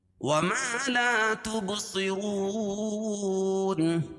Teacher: وما لا دونوں میں الف مد ہے، دونوں کو ایک ایک الف کے برابر کھینچ کے پڑھیں گے۔ ما اور لا، ما الف مدہ، لا الف مدہ۔